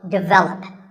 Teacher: This is pronounced wrongly by many learners of English as develop. But the first syllable is actually de, and the stress is on the second syllable